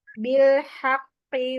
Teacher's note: Haqqi itu qafnya ada tasdid, jadinya ditekan dulu.